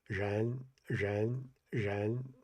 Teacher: you move your tongue up like you're going to do a retroflex, but you don't commit it. You don't like really push your tongue to the to make contact. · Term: approximant